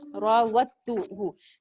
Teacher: the dal will be dropped because we have a shadda after dal